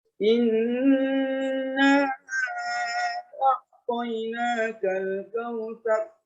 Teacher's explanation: di bagian in itu ada dengung. Kemudian naknya ada panjang.